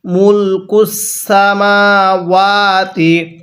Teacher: মিম ওয়াও দোনোটার মধ্যে এক আলিফ করে টান হবে কারণ হরফের উপরে এরকম চিহ্ন থাকলে ওই হরফটা এক আলিফ টেনে